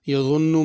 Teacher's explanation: یظن میں ضا ہے، اس کو ضاد یا ذال کر کے نہیں پڑھنا۔ یظن نون پہ غنہ کرنا ہے۔